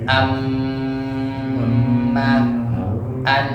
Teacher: Ada yang mengatakan rongga hidung ini tidak termasuk makharijul huruf karena memang tidak ada huruf yang keluar dari hidung, tidak ada. Adanya suara gunnah, suara dengung. Yang itu cuma ada di huruf mim dan nun.